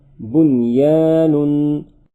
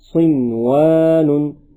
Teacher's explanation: ان چار کلمات میں نون ساکن کے بعد حروف یرملون ایک کلمے میں آنے کی وجہ سے ادغام نہیں بلکہ اظہار مطلق ہوگا، اس لیے ان چاروں کلمات میں غنہ نہ کرے